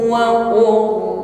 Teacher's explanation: Huruf ra sukun di sini tafkhim membacanya, ra-nya tebal ya. Karena sebelum huruf ra sukun ada harokat dhammah, maka fathah atau dhammah.